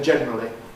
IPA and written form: ˈʤenrəli (generally)